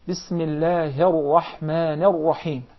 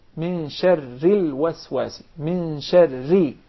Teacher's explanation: Then if we pronounce the ra with the vowel kasra, it becomes ri, min sharril waswasi, min sharri. So the ra becomes very soft, very thin. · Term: tarqiq